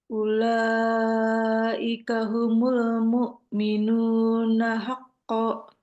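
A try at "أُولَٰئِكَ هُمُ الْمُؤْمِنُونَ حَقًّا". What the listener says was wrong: Panjangin lagi sedikit lagi. Hakko. 2 harkat. Sekali lagi.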